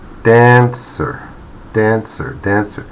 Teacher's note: The main stress is on the first syllable.